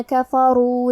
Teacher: حرف را پہ پیش ہے تو ہمیں را کو موٹی آواز میں پڑھنا ہے۔